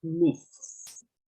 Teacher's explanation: En algunos es casi imperceptible la S como en myths. ¿No? Por eso dice, usa las cuerdas vocales y produce una vibración.